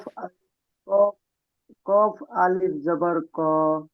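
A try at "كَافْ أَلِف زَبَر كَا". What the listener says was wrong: ক বলেছেন না কফ বলেছেন? যদি কফ বলে থাকেন তাহলে ভুল হবে। কফ আলিফ জাবার ক।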